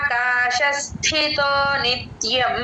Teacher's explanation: థ మహాప్రాణం థ అండి ధ కాదు